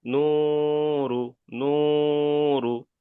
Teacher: নু বলে এক আলিফ পরিমাণ টান হবে, কিন্তু রু টান হবে না। ইজরা করেন। নুনের উপরে পেশ এসেছে, পেশটি হলো হারাকাত, হারাকাতকে এক আলিফ তাড়াতাড়ি পড়িতে হয়, টান দেওয়া নিষেধ।